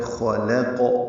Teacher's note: خا اور قاف پر ہیں، بیچ میں لام باریک ہے. خلق یہ پڑھیں گے، قاف کو السماوات کی سین سے ملا دیں گے تو خلق السماوات.